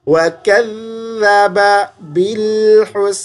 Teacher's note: زبان تھوڑی سی ذال پہ باہر نکال دیں